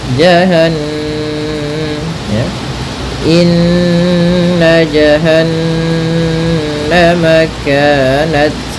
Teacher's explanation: Kemudian jahannama kanat, sama caranya adalah dengan menahan suara ya, suara gunnahnya ditahan atau suara dengungan di nunnya ya.